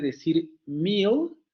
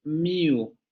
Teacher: Lo que ocurre con ciertas variantes del inglés, como por ejemplo en esta del Cockney, es que esa L oscura vocaliza. Es decir, en lugar de decir meal, van a decir mew. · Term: vocalización de la L oscura